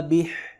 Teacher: حا حلق سے پڑھیں گے سینے سے نہیں